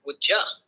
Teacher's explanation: For instance, in the phrase would you, the D in would and the Y sound in you can merge, resulting in a pronunciation like would-ja. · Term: coalescent assimilation